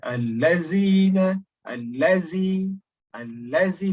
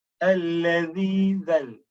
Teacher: the tip of the tongue is just below the upper incisors of our teeth.